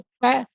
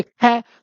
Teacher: अब आप जैसे हम इनको बोलेंगे तो कै और फिर बोलेंगे ख, तो ख में ज्यादा हवा निकली इसलिए दूसरा अक्षर क्या हो गया? महाप्राण।